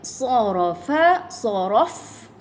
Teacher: Pada fa matikan ada sifat hams. Ini angin terlepas ya.